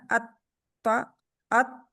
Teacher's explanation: آپ کو کوئی آواز نہیں سنائی دے گی جب تک آپ زبان کو چھوڑیں گے نہیں